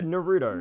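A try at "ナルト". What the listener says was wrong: Naruto. More emphasis on the toe than the ru. Naruto.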